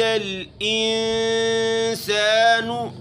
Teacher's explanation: نون میں اخفا کرنا ہے، سین کو سختی سے پڑھنا ہے. ما مد منفصل.